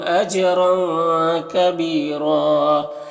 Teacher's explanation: انا میں نون مشدد غنہ ہوگا، میم میں اظہار شفوی ہوگا، جیم میں بھی قلقلہ ہوگا، جیم بھی حروف قلقلہ میں سے ہے اور را کو پر پڑھیں گے اور یہ دو زبر ہے، تنوین کے بعد کاف حروف اخفا میں سے تو تنوین میں اخفا ہوگا، یعنی اس کے آواز کو ناک میں لے جا کر ایک الف کی مقدار کھینچ کر پڑھیں گے۔ بی میں یا مدہ ہے اور را میں وقف کریں گے تو ایک زبر کے ساتھ الف پڑھیں گے اور را کو پر پڑھیں گے، اس طرح سے۔